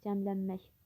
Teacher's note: Cəmlənmək sözündə vurğu, demək, cəmlənmək sondadır və K samiti İ səsinə çevrilir.